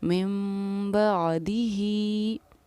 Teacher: मीम पर हम ठहराव करेंगे, गुन्ना करेंगे और इख़फ़ा करेंगे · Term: इख़लाब